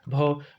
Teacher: हिंदी की स्पर्श घोष महाप्राण उष्टय व्यंजन ध्वनि है